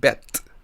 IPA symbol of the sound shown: e